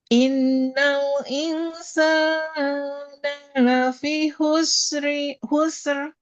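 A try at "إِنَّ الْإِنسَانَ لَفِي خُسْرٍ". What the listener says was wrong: dikurangi sedikit. Kurangi sedikit harokatnya. Innal insana, cukup dua harokat.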